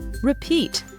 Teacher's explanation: Note that the two I's sounds are different. The former is a short sound, while the latter is a long sound.